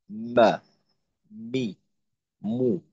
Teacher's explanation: আর দুই ঠোটের শুকনা জায়গা থেকে উচ্চারিত হয় মিম। তো শুকনা জায়গা বলতে ঠোট স্বাভাবিক অবস্থায় যেমন থাকে তো এটাকে একটু ভিতরের দিকে নিয়ে ঠোটের শুকনা জায়গায় এক অংশ আরেক অংশের সঙ্গে মিলিয়ে তারপর আমরা উচ্চারণ করব।